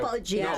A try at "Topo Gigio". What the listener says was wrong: No, not Popo. Topo.